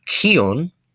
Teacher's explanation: the KH is pronounced essentially like a K, but you kind of essentially constrict your diaphragm a little bit as you say it. That way it comes out with that extra H sound, and that means to breathe.